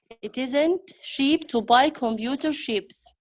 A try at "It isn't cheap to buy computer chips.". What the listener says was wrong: Okay, you have problem in your sound. Cha. CH together. Sheep. It's like you want to say t, but then you make it into ch sound. Chip and chips.